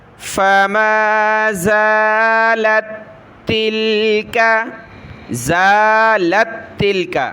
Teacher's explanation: یہاں پر دو تا ہیں، پہلی تا ساکن ہے، اس کو چھوڑ دیں گے، اگلی تا مشدد کو پڑھیں گے۔